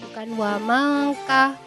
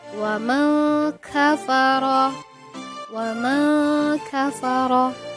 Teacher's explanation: ikhfa artinya samar, maka huruf kaf di sini disamarkan